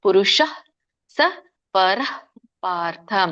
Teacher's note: ಪುರುಷಹ ಅಂತ ಮಧ್ಯದಲ್ಲಿ ಹೇಳಂಗಿಲ್ಲ ಪುರುಷ ಅಲ್ಪವಾಗಿ ಹ ಕೇಳಬೇಕು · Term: ವಿಸರ್ಗ